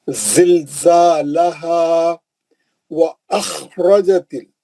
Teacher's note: اوپری حلق سے کھردر آواز، موٹا مستعلیہ کا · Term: خا